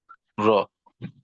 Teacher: রয়ে জবর থাকার কারণে মোটা পড়বো। র, হা জবর র, রহ।